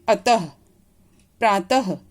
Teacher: इसका जो उच्चारण होता है वो कंठ से होता है, गले से होता है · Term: विसर्ग